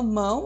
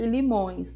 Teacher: observe a nasalização passando pelas vias nasais